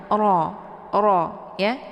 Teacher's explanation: Kemudian ra ada hukum bacaan tafkhim karena ra-nya berharakat fathah. Jadi ra dibaca tebal dengan posisi ujung lidahnya terangkat ke langit.